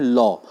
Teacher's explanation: ऐसा व्यंजन जिनके उच्चारण में आपकी जीभ का भाग मसूड़े को तो छूता है लेकिन जो वायु है वो पार्श्व के आसपास से निकल जाती है, तो उनको क्या बोलते हैं, पार्श्विक व्यंजन बोलते हैं।